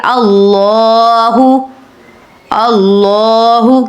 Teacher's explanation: آپ نے اللہ کے نام کو پر کرنا ہے، یعنی کہ موٹا کرنا ہے، اللہ نہیں کہیں گے، کہیں گے اللہ، اللہ، کیونکہ اللہ کے اوپر جو ہے وہ کھڑا زبر ہے، آپ نے اس لیے اس کو کھینچنا ہے، اللہ۔